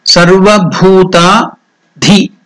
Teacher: That Dhi is also Mahaprana, not Di, it is Dhi.